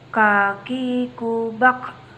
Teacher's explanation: huruf k menyentuhkan pangkal lisan kita dengan langit-langit bagian belakang